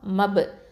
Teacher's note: Okay, இந்த இடத்துல வந்து இந்த ப சுக்குனுக்கு என்ன பண்ணுவோம், கல்கலத்து சுகரா. ஓகேவா? கம்மியாக கல்கலா கொடுக்கணும்